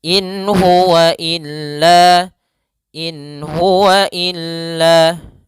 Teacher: Kemudian pada lafal in huwa ada bacaan izhar, yaitu nun sukun bertemu dengan huruf ha. Maka suara nunnya jelas.